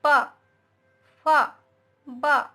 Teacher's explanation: देखिए दोनों ओठ हमारे ज्वाइंट हो जाते हैं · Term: ओष्ठ